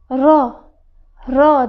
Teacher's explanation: ust tishlarimizning ichki tarafdagi tepasiga tekkizib ro, ro deymiz. Yumshoq ro, ro, ro deymiz.